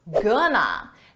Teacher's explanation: We take 2 words, going to, and we reduce it into one, gonna. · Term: reduction